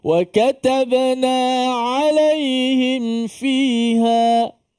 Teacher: Walaupun panjang tapi tekan ain tu masih bunyi. Na'a, na'a bunyi.